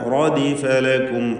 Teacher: റാഇനെ പൂർണ്ണമായ തഫ്ഖീം കൊടുക്കുക, മഫ്തൂഹത്താണ്